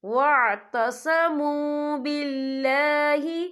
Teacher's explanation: یہاں اللہ کا نام باریک پڑھا جائے گا کیونکہ اللہ کے نام سے پہلے زیر ہے